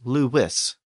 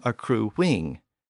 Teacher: When a U appears before another vowel, it tends to make the W sound.